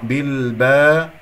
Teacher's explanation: اقف على لام ساكنه يجري فيها الصوت فتره زمنيه بسيطه